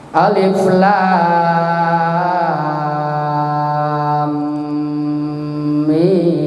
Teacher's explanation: Jadi dalam mim gunahnya 3 harkat, mimnya 6 harkat, itu 9 harkat itu. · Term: mad lazim mukhaffaf kilmi